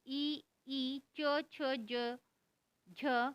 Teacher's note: तालव्य, तालु, मुंह के ऊपरी भाग और जीभ, ये इसका उच्चारण स्थान है।